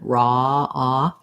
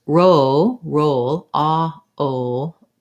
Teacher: What we have in raw is a rounded ah vowel. So it's just like the same as in saw or lawn. · My jaw's a little bit open, raw, ah, versus roll, ah, o. When I go to o, I'm more rounded and my jaw is a little more closed.